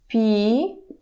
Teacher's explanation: If we are having hard consonant in the ending, hard consonant, voiced consonant, g, g, g, it becomes unvoiced